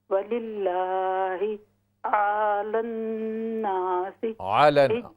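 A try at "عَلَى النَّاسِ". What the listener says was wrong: وللہ علی الناس علن آئین کو لمبا نہ کریں. علن علن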